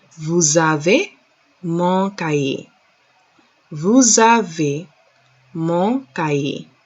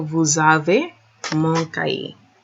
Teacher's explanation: When it's like that, when the beginning of the sentence is like that, or even any part of the phrase, there's a liaison between the S and the A, the S and the vowels.